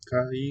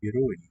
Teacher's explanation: Akai stays high, whereas shiroi is low, high, low.